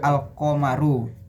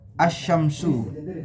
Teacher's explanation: Dalam idhar qamariyah alif lam dibaca dengan jelas. Sementara dalam idgham syamsiyah alif lam dilebur ke dalam huruf berikutnya dan sehingga tidak terdengar secara terpisah. Contoh dari idhar qamariyah adalah kata al-qamaru.